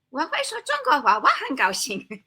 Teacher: you use English intonation instead of tones